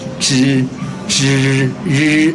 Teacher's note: tip of the tongue touch the gum line, upper teeth gum line, between the gum line and the hard palate there.